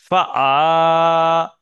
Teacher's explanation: আইন গোলার মাঝখান থেকে উচ্চারণ হয়